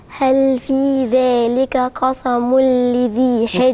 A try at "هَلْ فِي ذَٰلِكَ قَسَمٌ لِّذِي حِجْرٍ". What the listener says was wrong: قلبت السين عندي صاد، ودي مش صاد، دي سين.